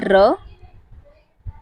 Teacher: नोक का वत्सर से कई बार टकराव या फिर प्रकंपन से उत्पन्न ध्वनि को हम लुंठित या फिर प्रकंपित व्यंजन कहते हैं। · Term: लुंठित व्यंजन